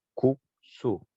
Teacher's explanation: 국수 앞에 예사소리 기억이 나오면 뒤에 시옷은 된소리로 발음이 돼요